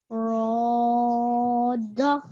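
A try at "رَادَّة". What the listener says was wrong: This tashdid needs to be stressed and held a little longer. So it needs to be a full 2 seconds. Roda.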